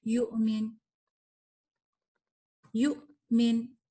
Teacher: جھٹکا، ایک کٹ، ایک سٹاپ، اور اس کے بعد آپ اگلے لیٹر پہ آ جائیں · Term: حمزہ